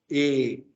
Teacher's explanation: Al parecer, se pronunciaba como una E abierta.